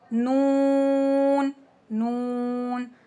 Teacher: जुबान की नोक ऊपर के मसूड़ों से जब लगती है तो नून अदा होता है। Tip of the tongue with gums. · نون زبان کی نوک اوپر کے مسوڑوں سے جب لگتی ہے تو نون ادا ہوتا ہے. Tip of the tongue with gums, it's also light letter.